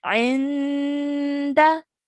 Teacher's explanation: we have to spend about 2 seconds on this noon sakin